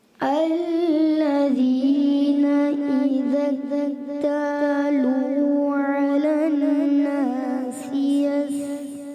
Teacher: یستوفون یہ بھی سین, سادہ نہیں کریں گے سیٹی کے ساتھ